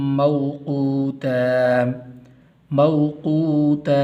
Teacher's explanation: یہ واو حروف العین میں سے ہے تو اس لیے اس کو لمبا نہیں کرنا